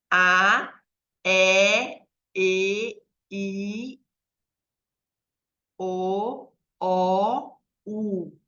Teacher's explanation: Vejam que a boca vai fechando conforme chega no U. Então, esse movimento vai trazer as vogais orais, gente.